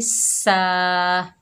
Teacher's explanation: सीन के ऊपर खड़ा ज़बर है, एक अलिफ की मिकदार खींचकर पढ़ेंगे।